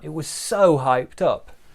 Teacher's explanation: big stress on so